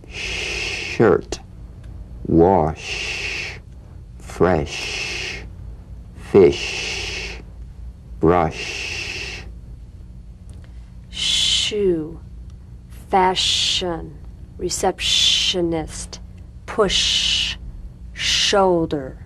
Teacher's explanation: a high-pitched wind sensation but no rush of air now sustain the SH in these words shirt wash fresh fish